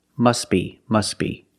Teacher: The T is silent because it's between consonants when you link the words. Must be. Link the sounds s with a b.